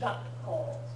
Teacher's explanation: It should feel like your tongue actually stops short when it's trying to say the K. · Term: glottal stop